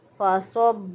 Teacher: हरूफ़ मुस्तारिया कहते हैं उन हरूफ़ को जिन हरूफ़ की अदायगी में ज़ुबान की जड़ ऊपर के ज़ुबान का पीछे वाला हिस्सा ऊपर के तालु की तरफ उठ जाता है, इस वजह से ये खूब मोटे अदा होते हैं। तो सौत को मोटा पढ़ा फ़सब्ब, बा के ऊपर शद है, मज़बूत क़ुव्वत से अदा किया।